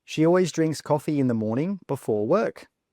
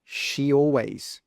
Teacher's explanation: It's like there's a Y between the she and the always.